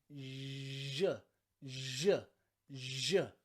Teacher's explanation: It's nearly the same mouth position as the CH in words like chat or chip, okay? Ch. But this time, we're voicing it and we're saying je, je, je, okay? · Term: super soft